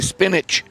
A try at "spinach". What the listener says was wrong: There's just a ch. There's no J.